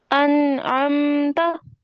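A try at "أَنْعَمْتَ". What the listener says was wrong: نہیں، آپ چھوٹا کریں ان کو، انعمت،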